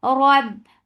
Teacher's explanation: Ba will cut off the sound because ba is among shidda letters.